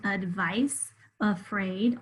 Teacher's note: you can hear that schwa in the beginning in the first syllable. You'll hear that sound in the beginning of a word often spelled with A.